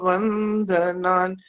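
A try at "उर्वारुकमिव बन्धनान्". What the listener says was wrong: उर्वारुकमिव के बाद बंधनान बोलना, ये ब बोलना है, वो नहीं बोलना। बंधना, बंधन है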